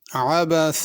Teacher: अबसा में आइन है, अबसा हमज़े के साथ नहीं पढ़ना, सीन सही अदा करनी है। अब स्वाद नहीं पढ़ना या सा न पढ़ी जाए।